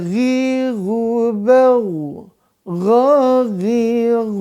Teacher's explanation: huruf Gin atau huruf gho ini berada di tenggorokan atas